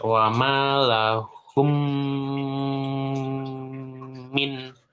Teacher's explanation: Tapi ini mim ketemu mim juga wajib gunnah dan ditahan 2 harokat. Mim ketemu mim itu wajib gunnah. Namanya idgham mimi.